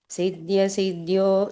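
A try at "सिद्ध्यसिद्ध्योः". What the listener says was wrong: ಸ್ವಲ್ಪ ಹ ಉಚ್ಚಾರಣೆ ಬರಲಿ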